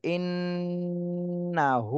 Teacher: হরকতের বামে নুনে তাসদিদ, এখানে ওয়াজিব গুন্না করতে হবে।